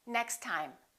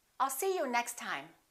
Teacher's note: we only pronounce one t